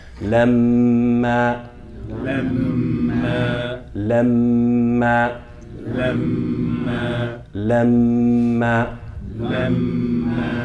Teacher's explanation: An alif, so that's 2 counts. So the meme that you double and the a that you pronounce should have the same length. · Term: Meme mushaddada